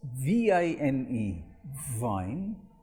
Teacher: v is spoken with your lower teeth, with your lower lip and upper teeth, and there's a lot of friction